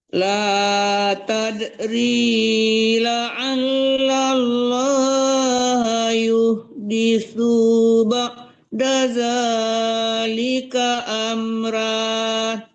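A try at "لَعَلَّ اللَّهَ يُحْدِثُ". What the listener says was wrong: Ronya tebal, sunya juga jangan tertahan, tidak panjang su. La'allallaha yuhditsu ba'da zalika amra. Itu nggak panjang, La'allanya kan nggak panjang. La'allallah. Ya, bukan yu ya Bu, tapi yuh kecil ya. Di tengah-tengah Jangan yuh di su.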